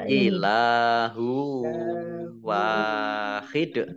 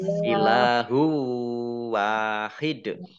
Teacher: Kemudian lam fathah alif mat tabi'i juga baca panjang 2 harokat. Kemudian dhammah tanwin bertemu dengan huruf wawu bacaan idgham bi gunnah. Idgham masuk bi dengan gunnah mendengung. Mendengung wawu ditandai dengan wawunya ada tasdidnya.